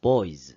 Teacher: 두 번째 는 'boys' 인데 , 이것 은 유성음 이 됩니다 . 그래서 유성음 ' z' 발음 이 나옵니다